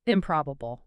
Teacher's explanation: N becomes M whenever it appears before a labial consonant like P or B. · Your lips want to close for the P. So the N naturally shifts to an M, which is also a lip sound. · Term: nasal assimilation